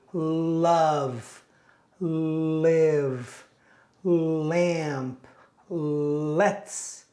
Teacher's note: When you pronounce the L sound, the tip of your tongue touches the back of your upper teeth. L, l. When the L sound is in the beginning of the word, your tongue is straight, like this.